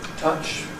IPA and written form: tʌʧ (Touch)